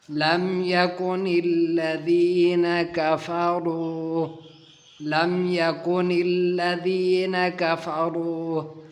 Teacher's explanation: میم ساکن ہے اور میم ساکن کے بعد یا آیا ہے۔ یہاں پر اظہار کا قانون لگے گا، میم ساکن کو ظاہر کر کے پڑھیں گے۔